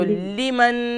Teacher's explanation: جب لام کے نیچے زیر ہوگی تو اس کا ساؤنڈ لے نہیں ہوگا بلکہ لی ہوگا